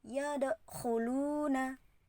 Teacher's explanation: Dal itu termasuk hukum bacaan qalqalah karena dipantulkan.